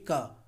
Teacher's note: दोस्तों क वर्ग का उच्चारण स्थान होता है कंठ। क बोल के देखिए क, तो दोस्तों को कंठ मतलब गले से निकल करके आएगा।